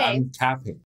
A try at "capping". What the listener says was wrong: Maybe not so much emphasis on the G. It's more like capping.